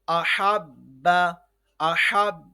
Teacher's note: یہ کیونکہ قلقلہ والا حرف با ہے تو اس پہ جب مشدد آ جائے گا تو اس کو ذرا جماؤ سے ادا کرنا ہے